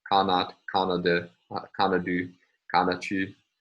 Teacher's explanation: It has a voiceless ta, but a voiced da before the ending of the accusative.